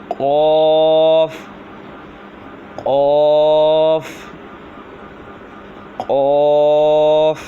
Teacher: قوف جو ہے زبان کی جڑ اور تالوں کے نرم حصے سے ادا ہوتا ہے